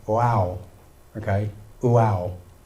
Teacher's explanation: this is when you've got the word wow, it actually starts with the oo sound